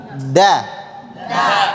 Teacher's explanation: Kalau huruf dal tempat keluarnya adalah ujung lidah kita bertemu dengan atas pangkal gigi seri bagian atas.